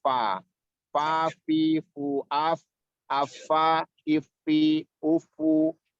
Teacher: huruf fa yang berasal dari bagian dalam bibir bawah atau perut bibir bawah bertemu dengan ujung gigi seri atas. Fa. Jadi dia di bibir itu, fa di bibir itu mempunyai makhraj sendiri atau tempat sendiri.